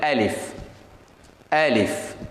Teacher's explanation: அலிஃப் புல அப்படி உச்சரிப்பதல்ல, அலிஃப் என்று சொல்லக்கூடாது. அலிஃப், ஏ இல்லை, ஏயும் இல்லை, ஆவும் இல்லை, 2க்கு நடுவால